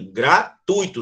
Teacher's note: É uma semi, gratuito. Sobe no U e desce no I. Não é gratuito, tá?